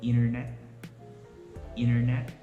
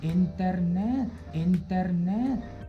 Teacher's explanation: the T sound is omitted in the word. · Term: silent T